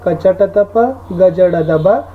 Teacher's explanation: ವಿಭಾಗವನ್ನು ಮಾಡ್ತೀವಿ. ಅಂದರೆ ಆ ವರ್ಗದ 1 ಮತ್ತು 3ನೇ ಅಕ್ಷರಗಳು ಅಲ್ಪಪ್ರಾಣ ಆಗಿರ್ತಾವ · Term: ಅಲ್ಪಪ್ರಾಣಗಳು